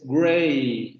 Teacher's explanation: Se relaja mucho la vocal final. Esta E ayuda mucho al relajamiento de la vocal final y es lo que da esta vocal que aparece después.